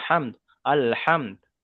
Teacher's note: হা মিম দাল জবার হামিম জবার সেক্ষেত্রে পড়লে কি করতে হবে দালের উপরে পেশটাকে সাকিন করে আগের অক্ষরের সাথে মিলিয়ে পড়তে হবে